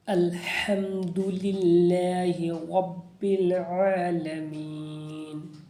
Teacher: یہاں پر جلدی پڑھیں گے، ہا کو حرف حلقی ہے، حلق سے ادا کریں گے